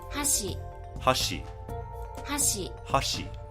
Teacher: You can see it's falling. So the pitch starts high and falls. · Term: pitch accent